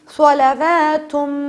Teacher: صلواتم پہ ہم غنہ کر رہے ہیں کیونکہ یہ ادغام ود غنہ یعنی ادغام غنے کے ساتھ ہو رہا ہے